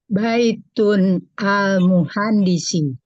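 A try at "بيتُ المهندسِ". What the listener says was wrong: Nah, yang pertama hilang tanwinnya. Baitun. Baitul muhandisi. Baitul Tanwinnya ini baitun. Berubah jadi baitu. ayuh baitul muhandisi. Langsung.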